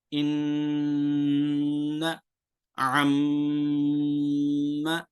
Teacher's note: یہ گنگنانے کی آواز جو آپ کو آ رہی اسے غنہ کہتے ہیں